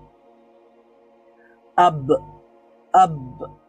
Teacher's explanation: ব সাউন্ডটা শেষ, থেমে গেছে, কিন্তু কলকলা হওয়ার কারণে সেখানে আবার হয়তো বা রিপিট সাউন্ড হতে পারে, কিন্তু প্রথম সাউন্ডটা থেমে গেছে, শ্বাসটা বন্ধ হয়ে গেছে, এটা হলো জেহের।